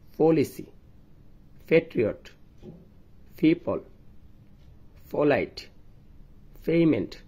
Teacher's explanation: আমরা বাংলাদেশিরা এই তিনটি লেটারকে পি, টি, কে এর মতো উচ্চারণ করি, কিন্তু নেটিভ স্পিকাররা এগুলোকে ফি, ঠি, খে এর মতো উচ্চারণ করে। এগুলো উচ্চারণের সময় মুখ দিয়ে একটু বেশি পরিমাণ বাতাস বের হবে। দুটি ঠোঁট একত্র করে উচ্চারণের সময় একসাথে মুখ দিয়ে বাতাস বের হবে। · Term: অ্যাসপিরেটেড সাউন্ড